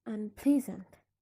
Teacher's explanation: It's considered as if it's not there, so the stress remains on the stem and on the same syllable, ple, unpleasant.